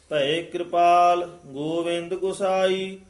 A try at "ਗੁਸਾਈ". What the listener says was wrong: ਇਹਨੂੰ ਗੋਸਾਈ ਨਹੀਂ ਕਹਿਣਾ, ਹੂੜੇ ਨਾਲ ਇਹ ਔਂਕੜ ਨਾਲ ਉਚਾਰਨ ਕਰਨਾ ਹੈ ਛੇਤੀ। ਭਏ ਕਿਰਪਾਲ ਗੋਵਿੰਦ ਗੁਸਾਈ।